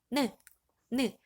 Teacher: 혀 끝이 윗잇몸에 닿죠. 우리 그래서 혀 설자를 써서 설음이라고 이야기했고요.